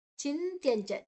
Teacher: ಚಿಂತ್ಯಂಚ ತ ಮತ್ತೆ ಯಾ, ಚಂತ್ಯಂಚ ತ ಅಲ್ಲಿ ಒಂದು ಸೊನ್ನೆ ಅನುಸ್ವರದ ಉಚ್ಚಾರಣೆ ಞ, ಮುಂದಿನ ಅಕ್ಷರ ಚ ಇದೆ, ಚ ಚ ಜ ಜ ಞ, ಚ ವರ್ಗದ ಅರ್ಧ, ಚ ವರ್ಗದ ಅನುನಾಸಿಕದ ಅರ್ಧ, ಚ ಞ ಞ ಅಲ್ಲ ಞ.